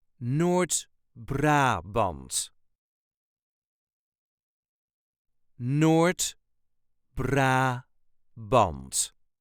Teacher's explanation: There is a very slight emphasis on the first syllable of the second word.